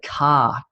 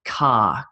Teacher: In Australia, we'd say car, and we sort of miss the R sound, whereas Americans tend to go R, like I have a red car, but Australians say car.